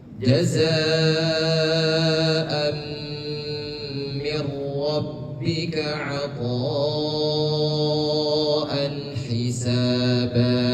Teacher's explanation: Pada hamzah bertemu dengan mim agak ditahan sedikit karena ada tanwin masuk ke dalam huruf mim. Dia dikategorikan sebagai hukum idgham bi gunnah.